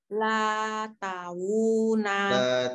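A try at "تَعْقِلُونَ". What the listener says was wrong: Tal. Ya. Lam sukun tetap. Taluna.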